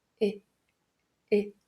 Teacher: pode buscar o E de elefante, mas deixa ele bem curtinho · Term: Short I